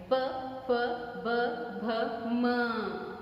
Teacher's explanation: प का उच्चारण कब कर रहे हैं, कैसे कर रहे हैं हम लोग, जीभ है साथी में, मुंह होंठों पर लग रहा है, दोनों होंठ लगेंगे तभी मात्र उच्चारण हो रहा है। प दोनों होंठ लगकर निकल रहे तभी आवाज बाहर आ रही, तभी ध्वनि बाहर आ रही है। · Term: प वर्ग